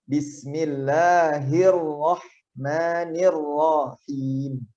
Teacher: huruf ra itu lidah kita ketika menyebut huruf ra lidahnya bergetar, tapi getarannya hanya sedikit saja. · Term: takrir